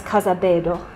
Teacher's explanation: in Sesotho if there's an L followed by a vowel it’s pronounced like a d